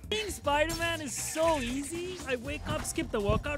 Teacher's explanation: You can't really tell if it's voiced or if it's unvoiced. P's sound like B's. T's sound like D's.